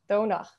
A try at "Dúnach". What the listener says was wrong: almost, except the O changes at the start as well. That's another feature we didn't talk about. What you get is Dúnach. yeah, that's traditionally the way it's pronounced.